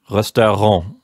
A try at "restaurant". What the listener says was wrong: Oh, restaurant. No, in that case, it is your O that is wrong. Resto, it's an O. Restaurant. Your R, good.